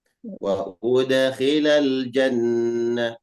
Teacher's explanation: tambah dikit dengunya di jannat. Jangan hilangkan dengunya.